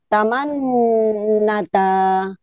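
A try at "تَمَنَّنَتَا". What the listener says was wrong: Nunnya kurang satu. Taman Nanata.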